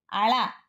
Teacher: వైపు గాలి ద్వారా వెలువరించడం వల్ల ఏర్పడే ధ్వనులు ల నాదం దంతమూల్యం పార్శ్వకం అళ నాదం మూర్ధన్యం పార్శ్వికం